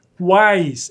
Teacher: Você ouve o U, você ouve o A e você ouve o I, na mesma sílaba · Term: tritongo